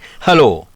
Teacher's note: اس حرف کو گلے کے اندر موجود صوتی تہوں، جن کو انگلش میں ووکل کورڈز کہتے ہیں، کو تھوڑا سا کھول کر سانس کے سادہ اخراج سے ادا کرنا ہوتا ہے